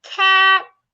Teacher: The A after the T becomes silent.